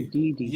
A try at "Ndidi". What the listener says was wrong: Hence, you have to make sure you got your nasal, because from your nasal we know if you're saying you singular or he. If I say Ndidi, it is first singular.